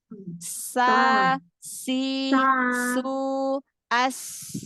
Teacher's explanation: Ujung lidah ketemu dengan dua gigi seri atas. Permukaan gigi seri di belakang gigi seri atas. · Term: huruf sin